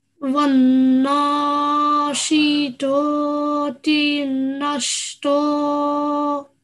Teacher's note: this letter طَ, it is also one of the 7 thick letters. So, we have to make a thick sound for this.